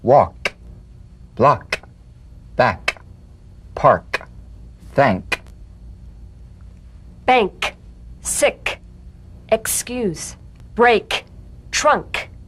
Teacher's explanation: the unvoiced tongue back plosive consonant with the tongue in the GE position let the tongue spring away in the soft unvoiced click